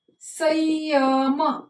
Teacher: संयम म्हणजे इथं य सारखा उच्चार होतोय. पहा, म्हणजे इथं य हे अर्ध अनुनासिक झाले.